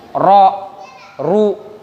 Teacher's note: Kalau dia barisnya fathah atau dhammah, baik maksudnya ra atau ru, itu pasti tafkhim, bibirnya harus maju. Ra, ru, nggak mungkin ra, ru, pasti ro, ru.